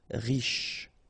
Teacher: Final not really pronounced, so sh is the last sound.